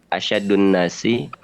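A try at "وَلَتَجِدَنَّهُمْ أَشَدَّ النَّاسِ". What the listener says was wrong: Coba lihat di sini udah rasa asyadda ya, bukan asyaddu.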